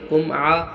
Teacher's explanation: اظہار شفوی ہو رہا جہاں ہم ظاہر کر کے بغیر غنہ جلد ادا کریں گے